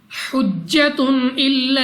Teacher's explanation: جیم قلقلہ مشدد ہے تو خوب جماؤ کے ساتھ ادا ہوگا، دو پیش کی تنوین کے بعد حمزہ حروف حلقی میں سے ہے، اظہار کا قاعدہ ہے بغیر غنہ کے پڑھنا ہے،